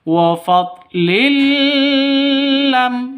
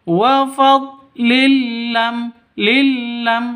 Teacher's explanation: Jadi idgham itu masuk ke huruf ke hurufnya ke huruf idgham bila ghunah. Bila ghunah tanpa dengung. Jadi masuknya tanpa dengung bukan dibaca dengung. · Kita bahas wa fadlil lam yamsashum, wa fadlil lam, wa fadlin, lam tanwin bertemu dengan lam. Cara bacanya masuk ke lam tanpa dengung ya, tanpa dengung. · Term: idgham bila gunnah